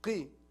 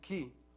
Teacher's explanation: Qaf, deeper than ka.